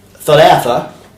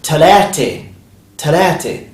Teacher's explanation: So even the ta marbuta changes the pronunciation from a to a. And also, of course, the tha changes to a ta.